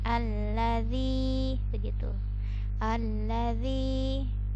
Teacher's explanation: jadi pakai ujung lidah dan dipanjangkan dua harokat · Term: huruf zal, huruf dzal